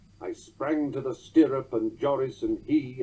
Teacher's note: Browning also dispenses with the first weak syllable in each line. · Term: clipped opening feet